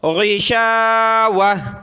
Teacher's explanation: گول تا پر جب وقف کریں گے تو اس کو ہا پڑھ دینا ہے